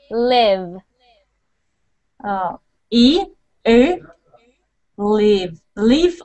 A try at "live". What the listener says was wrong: Leave, live. So I'm hearing leave, leave. I'm still hearing E. Let's try it again. Leave, live, live.